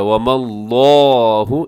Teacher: وَمَا اللَّهُ، یہاں لفظ اللہ کو موٹا پڑھیے گا، لفظ اللہ سے پہلے، لفظ اللہ کے لام سے پہلے جب کسی حرف کے اوپر زبر ہو یا پیش ہو تو موٹا پڑھتے ہیں، یہاں میم کے اوپر زبر ہے، لفظ اللہ کو خوب موٹا کر کے پڑھیے گا